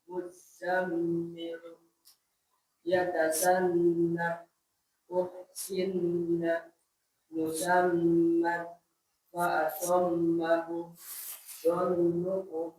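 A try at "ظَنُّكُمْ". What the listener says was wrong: Lebih tebal vo-nya. Dhannukum.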